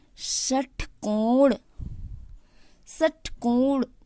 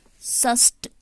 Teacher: मुख के अंदर जीभ जब श बोलती है तो जीभ गोलाई आकार लेते हुए ऊपर दांत के मसूड़ों को छूती है, स्पर्श करते हुए ऐसा लगता है कुछ गर्मी मुख से बाहर निकल रही है। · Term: मूर्धन्य श